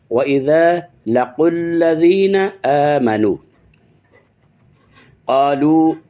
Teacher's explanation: वाव के ऊपर मद है, मद मुनफसिल है, थोड़ा इसको लॉन्ग करेंगे